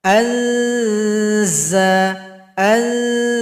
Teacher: Berikutnya adalah huruf zai ujung lidah ke belakang gigi seri bagian bawah, bunyinya tajam